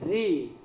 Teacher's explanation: देखिए री, री बोलेंगे तो आपका जो जीभ है बोल के देखिए री, तो जीभ का जो आगे वाला भाग है वो मूर्धा में टच करेगा दांत से ठीक थोड़ा पहले ऊपर की ओर, तो ये हो जाएंगे मूर्धा, मूर्धा, मूर्धा।